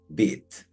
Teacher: termina consonante y nos da el sonido cerrado de la i